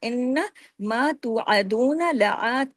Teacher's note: ان نون پہ تشدید ہے، غنہ ہوگا